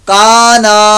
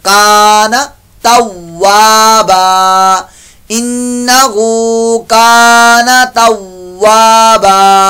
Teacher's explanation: नून को लंबा नहीं करना